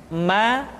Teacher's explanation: huruf ma diucapkan dengan cara merapatkan dua bibir. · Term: huruf mah